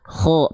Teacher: Nah, kho tuh di sini, kho di sini, ujung tenggorokan. Huruf kho huruf yang tebal, angkat pangkal lidahnya, kho, makanya keluar vokal o.